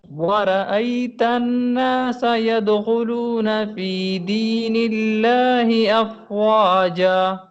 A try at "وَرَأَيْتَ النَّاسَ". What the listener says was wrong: وَرَأَيْتَ النَّاسَ، وَرَأَيْتَ النَّاسَ، غنہ کریں صحیح طرح.